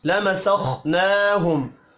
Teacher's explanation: خا حروف مستعلیہ ہے پر پڑھا جائے گا خا ساکن ہے قلقلہ نہیں کرنا نا نون کے اوپر کھڑی زبر ہے 1 الف کے برابر